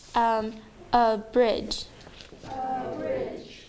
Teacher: There are 2 syllables and the second syllable gets accent.